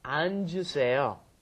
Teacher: Because it's got the double 받침 there. So you've got to go 안, and then the J sound comes up